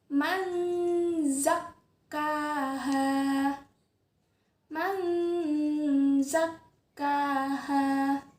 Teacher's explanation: Nun sukun bertemu dengan huruf z, zain. Nunnya dimasukkan ke bunyi huruf zain.